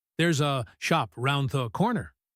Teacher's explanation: The a in around drops.